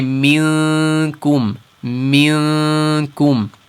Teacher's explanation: The kaf is in the front of the mouth. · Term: ikhfa